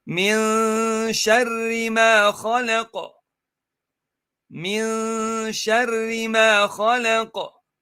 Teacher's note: So the noon Saakin articulation point here goes on to the sheen articulation point, but does not touch the articulation point of sheen. It just comes close to it. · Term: hidden noon